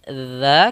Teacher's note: dza kita keluarkan lidah kita menempel dengan gigi seri kita